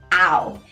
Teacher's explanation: It is made of an ah and a w, and together it makes an ow sound.